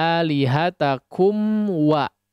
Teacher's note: ataupun fak ya lihat akumwa ya harus jelas jangan KUA ya Jadi mimnya betul-betul disukunkan ya betul-betul Ada mim di situ ya jadi jangan masuk kepada huruf wa ya sebagaimana yang terjadi pada idgham ya jadi harus lihat mimnya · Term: mim sukun